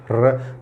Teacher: तो र बोलते समय जीभ थर्राती है, हल्की सी जीभ थर्राती है, आप महसूस करोगे। · र बोल के देखो, र, तो र बोलते आपकी जीभ ऐसे हल्की सी कंपन करेगी, थर्राएगी, तो र लुंठित या प्रकंपित व्यंजन के नाम से जाना जाता है।